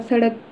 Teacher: उसके बाद सड़क का उच्चारण करके देखिए आप, तो जीभ दांत से टच होती है। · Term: दंत्य